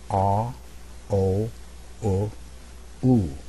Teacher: jaw closing a little bit and also this is very important my lips become more and more round